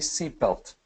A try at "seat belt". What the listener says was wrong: With the T at the end. Seat belt.